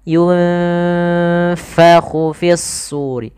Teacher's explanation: Yunfa, ini ikhfa. Samarkan bibirnya, posisinya gigi atas menempel bawah